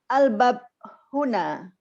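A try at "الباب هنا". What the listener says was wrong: Bab tu panjang sikit. Al-bab panjang.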